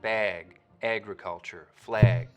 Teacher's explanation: you'll also start to get raising and tensing in the trap vowel when it comes right before a gu sound like in bag